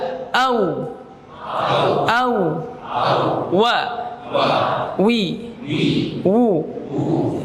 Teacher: Ya, karena wawu harus maju, ya. Makhrajnya seperti itu. Ya, dimoncongkan. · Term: huruf waw